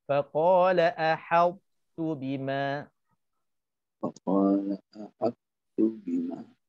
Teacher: ta tu huruf tebal, kita nak kena tebalkan ta tanpa qalqalah